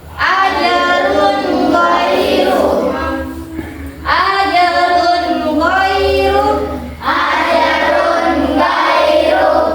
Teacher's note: tanwin bertemu dengan ghain. Maka hukum bacanya adalah ishar atau dibaca dengan jelas.